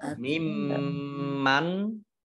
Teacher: mim tasdid bacaan gunnah dibaca mendengung ditahan 2 harokat.